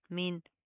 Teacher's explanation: अब यहाँ पर क्या है, नून साकिन के बाद हरूफ हल्की में से हा आ रहा है, ठीक है। तो यहाँ पर सिंपल इजहार होगा, हम नून के आवाज़ को जाहिर करेंगे, यहाँ पर हमने कोई इख्फा कोई गुना नहीं करना।